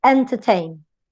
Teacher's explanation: Entertain. Last syllable is strong. It has a diphthong. Before you have a schwa. Before you have a simple vowel. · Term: secondary stress